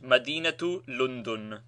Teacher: When a word ending in ta merbuta without a vowel sign has another word dependent on it, the ta is pronounced